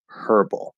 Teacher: the H pronunciation is the original British pronunciation and you will hear many British people say herbal